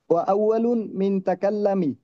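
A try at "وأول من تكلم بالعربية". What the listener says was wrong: মিন না, আউয়ালু, মান।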